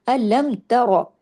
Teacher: ترا میں ایک ایک حرکت ہے لیکن را ہیوی ہوگا